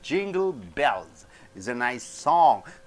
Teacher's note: nice is an adjective song is a noun so you're stressing on song